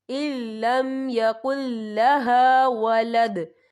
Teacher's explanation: اور آگے دیکھیں یَکُل، یہاں بھی نون ساکن ہے، نون ساکن کے بعد جو ہے لام آ رہا ہے، اور لام جو ہے حروف یرملون میں سے ہے تو یہاں پر ادغام ہوگا تو یہاں بھی ہم بنا غننے کے پڑھیں گے